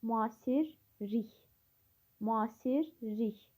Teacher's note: L samiti R samitinə çevrilir. K samiti isə İ səsinə çevrilir. 2 dəyişim var burada.